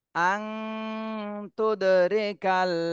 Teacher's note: নুন সাকিনের পরে ইকফার হরফ তা এসেছে এজন্য এই নুন সাকিনে ইকফা গুন্না করতে হবে আর ইকফা গুন্নাটা অনস্বরের মতন করতে হয়